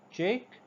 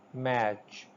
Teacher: This ch sound is produced when the air is blocked with tongue just beyond the alveolar ridge, cha, ch sound, and then released as a fricative.